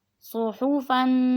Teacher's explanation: صاد کو موٹا کر کے پڑھیں گے اور ح نکالیں گے